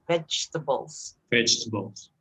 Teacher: instead of able it should be a bull so vegetables vegetables if you want to make it really like a native you say vegetables vegetables and without e in the middle